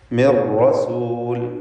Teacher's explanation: മിർ റസൂൽ, ഇവിടെ സാക്കിനത്തായ നൂനും ശേഷം റാഉം പൂർണ്ണമായും സാക്കിനത്തായ നൂനെ റായിൽ ലയിപ്പിച്ച് മണിക്കാതെ ഉച്ചരിക്കണം. ഇദ്ഗാം ബിഗൈരി ഗുന്നഹ്, റായിന് ഷദ്ദ് വരുന്നു, നൂനിൻ്റെ ശബ്ദം അല്പം പോലും ഉച്ചരിക്കപ്പെടുകയുമില്ല. മിർ റസൂൽ, റായിന് ഷദ്ദുള്ളത് കൊണ്ട് തക്രീർ വരുന്നത് സൂക്ഷിക്കേണ്ടതാണ്.